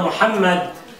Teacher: الكاتب الاول يقول ان محمد يبتدئ بحرف الميم وفي اوسطه ميما والانسان العربي حينما ينطق حرف الميم يضم الشفتين يعني الميم تخرج من وسط الشفتين